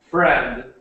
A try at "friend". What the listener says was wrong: Friend. When you were saying it, you were saying like a little sound after, like friend, friend. But we just say it like friend, and it ends at the friend. So friend. Almost, yeah, almost like a t sound. It's just a very short, like friend, not friend.